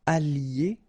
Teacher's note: I don't make the liaison just for you to listen carefully